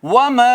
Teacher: واو ہونٹ گول کر کے الف مد کر رہے ہیں